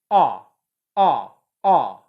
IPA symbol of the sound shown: ʌ